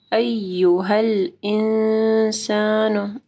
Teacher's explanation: انسان نون ساکن کے بعد سین ہے، یہاں پہ اخفا غنہ ہوگا. انسانو نہیں پڑھنا، انسانو، ٹھیک ہے، شارٹ پڑھنا ہے ضمہ کو.